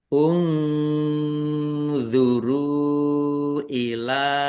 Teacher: nun sukun bertemu dengan huruf d bacaan ikhfa dibaca samar-samar